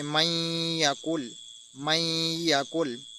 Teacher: थोड़ा सा हमने खींच कर पढ़ना है और आवाज़ को अपने नाक के बांसे से गुजारना है। · نون ساکن کے بعد یا کو پڑھا، نون کو چھوڑ دیا، نون کو نہیں پڑھا، کیونکہ یہاں پر ہم نے ادغام کیا ہے نون ساکن ہونے کی وجہ سے۔